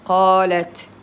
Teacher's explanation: You hear there's a little whisper after I say the t.